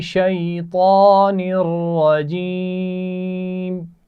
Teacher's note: طا کو موٹا پڑا جاتا ہے اور شی یائے لین ہے